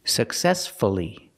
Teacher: the stress is on the second syllable, so we pronounce the U